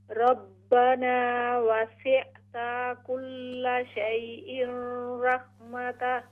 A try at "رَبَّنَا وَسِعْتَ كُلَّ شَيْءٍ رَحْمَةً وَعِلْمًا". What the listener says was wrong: ہاں جی یہ جو آپ کا لفظ ہے نا ربنا وسعت یہ کلیئرلی حمزہ آ رہا ہے.